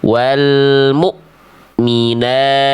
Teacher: putus bunyinya dari pangkal tenggorokan. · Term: hamzah sukun